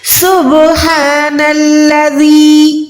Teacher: با پہ آپ نے آواز کو وائبریٹ کرنا ہے، آواز پہ لرزش آنی چاہیے، یہ ہو جائے گا کلکلا ساؤنڈ